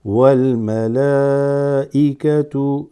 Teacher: It's almost like a breath that you pause and you hit the hamza.